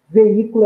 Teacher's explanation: veículo é uma proparoxítona porque a sílaba tônica é a antepenúltima sílaba